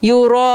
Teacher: سو یہاں پہ حمزہ اسی کلمے میں آ رہا ہے، جو مد بنے گی را پہ وہ مد واجب ہے، اور اس کو 4 کاؤنٹس تک ہم کھینچیں گے